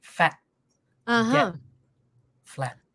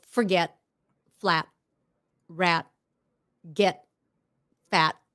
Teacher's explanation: So most of the time it's a stopped T.